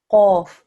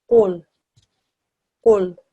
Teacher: You round your mouth, and where the sound is made is right at the back of your mouth, at the top of your throat. When you put that together here in this word, this reads qul, qul.